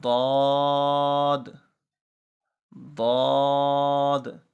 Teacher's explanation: زبان کے جو دائیں اور بائیں طرف والے کنارے ہیں، زبان اٹھے گی اور داڑھوں سے جا کر، داڑھوں کے کناروں سے جا کر لگے گی. اوپر والے دانت، اوپر والی جو داڑھیں ہیں ان کے کناروں پہ جا کے لگے گی، تو یہ ضاد ادا ہوگا، چاہے دائیں زبان لگے یا بائیں.